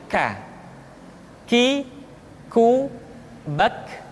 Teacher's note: Selanjutnya huruf K diucapkan dengan mengangkat pangkal lidah kita ke posisi di depan huruf Qaf. K diucapkan dengan mengalirkan nafas kita.